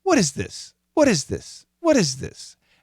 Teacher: because she's using a flap T, she's connecting the what and is together